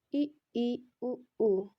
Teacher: संवृत होता है क्लोज, जिसमें हमारा मुंह पूरा बंद रहता है, जैसे ई उ ऊ, इसमें हमारा मुंह क्या होता है पूरी तरीके से बंद रहता है।